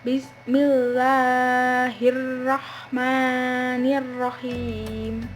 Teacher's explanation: Pada lafaz Allah dan Ar-Rahman dan Ar-Rahim cukup dibaca 2 harokat saja. Bentuk kesalahannya adalah kurang dari 2 harokat atau lebih dari 2 harokat. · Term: mat asli